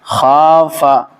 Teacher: ہم خا کو تو کھینچیں گے لیکن فا کو نہیں کھینچیں گے۔ خا کو ہم اس لیے کھینچیں گے کہ یہاں پہ الف مدہ الف ہے، ٹھیک ہے؟